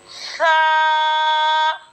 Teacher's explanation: सा का जो मखरज होगा वो ये होगा कि जबान का सिरा और ऊपर के दांतों के अंदरूनी किनारे से सा अदा होता है